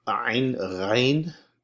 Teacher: Ain, ghain, again, same shape, similar place of articulation in the way back of the throat